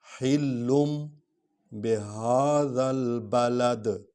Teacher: با حرف شفوی ہے، ہونٹوں سے ادا ہوتا ہے، اس لیے ہم اس کو ہونٹ سے ادا کر رہے ہیں۔